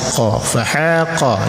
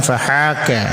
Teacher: Qaf itu di pangkal lidah, ka keluarkan sedikit dari pangkal lidah. Hampir ke tengah tapi belum ke tengah, jadi keluarkan dari pangkal lidah.